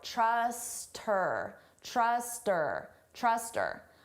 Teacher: we can get rid of that H sound and it just sounds like trust her.